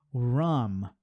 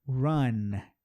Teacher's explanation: a palavra que termina com M, ele tem que fechar o lábio